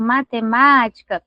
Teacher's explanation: Então, a gente percebe que o matemática, a tonicidade está na letra A da sílaba ma. Então, matemática, nós temos acentuação na sílaba tônica.